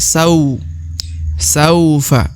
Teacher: huruf sa diayun sekali atau dipanjangkan dua harakat